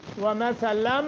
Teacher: نون تنوین کے بعد میم مشدد ہے، اس لیے غنہ کریں گے